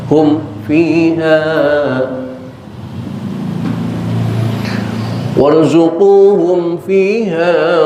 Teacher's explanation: Mimat diketemu fa, ingat baik-baik, itu idhar syafawi, diidharkan, dijelaskan